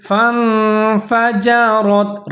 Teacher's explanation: حروف اخفا کا، تو یہاں پر ہم اخفا کریں گے، فَانفَجَرَتْ، را کو آپ نے موٹا کر کے پڑھنا ہے، اس کے اوپر زبر ہے